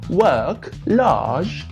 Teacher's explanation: the r is not strong at all it's it's very weak and kind of doesn't even sound like it's there